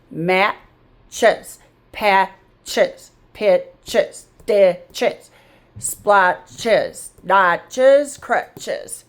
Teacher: And when we put it on there, the S is making the Z sound and we separate the T from the ch. The T gets to stay in syllable number one.